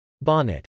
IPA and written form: bˈɑnət (bonnet)